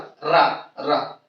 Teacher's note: रा को बोलते हैं प्रकंपित, क्या बोलते हैं, प्रकंपित, प्रकंपित वर्ड, इसको बोलने में कंपन होता है। बोल के देखिए रा, रा, रा, तो ये प्रकंपित हो गया रा।